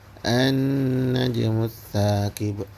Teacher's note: terdapat hukum gunah itu nun bertasydid maka dia ditahan dua harakat